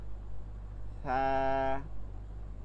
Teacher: বাতাস বের হবে, কোনো আওয়াজ হবে না, কোনো আওয়াজ হবে না।